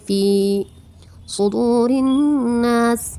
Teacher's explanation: واو ساکن سے پہلے پیش ہے اس لیے واو مدہ ہوگا، ایک الف کے برابر کھینچ کے پڑھیں گے